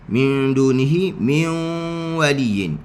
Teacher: Kita tolak sikit mulut kita ke depan. Huruf wau dari sudut makhrajnya dia adalah istidaratul fam. Dia bukannya dammus syafatain.